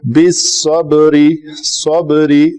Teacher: یہاں با کے اوپر جزم ہے تو اس با کو قلقلہ کر کے پڑھیں گے. بالصبری، صبری، صبری نہیں، با کو پکڑ کے نہیں رکھنا، اس کو چھوڑنا ہے، اس کے مخرج کو آگے را کے پتلا را کرنی ہے.